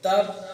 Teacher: میں پڑھتا ہوں تو ایک بار رک جاتا ہوں، آواز بند ہو جاتی ہے پھر دوبارہ کھلتی ہے